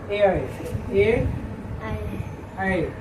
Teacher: जिसका उच्चारण कंठ और तालु से होता है उसको क्या कहते हैं कंठ तालाव